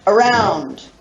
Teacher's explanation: You really put the emphasis on the second syllable. You barely hear the first syllable. First syllable is schwa.